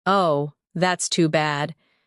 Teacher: Oh, that's too bad. With soft, low tone.